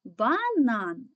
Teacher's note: твердий позначаємо однією рисочкою далі звук а голосний ненаголошений позначаємо кружечку звук н приголосний твердий позначаємо однією рисочкою звук а голосний наголошений позначаємо кружечком звук н приголосний твердий позначаємо